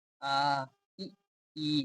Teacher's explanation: देखिए जब आप बोलेंगे तो आपका जो ओंठ है वो फैल जा रहा है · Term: प्रसरित